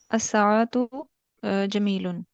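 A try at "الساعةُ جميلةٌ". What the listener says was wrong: Clear करें, आखिरी sound clear किया करें बिल्कुल।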